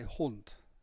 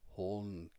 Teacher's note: The final D is pronounced very much like a T, and the U is very Germanic sounding.